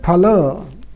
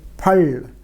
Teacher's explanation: So, for instance, Sanskrit phala, which involves alveolar lateral, it becomes in Marathi phal, with a retroflex lateral